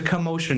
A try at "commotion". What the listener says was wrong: I heard something different. There was like a big emphasis on the first syllable. It was weird. Commotion.